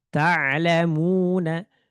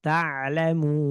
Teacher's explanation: ini kalau diwaqafkan nunnya jadi sukun arid sukun baru. Ta'lamun seperti itu. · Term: mad arid lukun